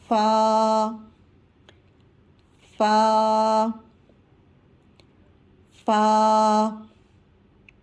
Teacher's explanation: فا کی ادائیگی میں اوپر دانتوں کے کنارے، نیچے ہونٹوں کے تر والے حصے سے ٹچ کر کے فا کی ادائیگی ہوگی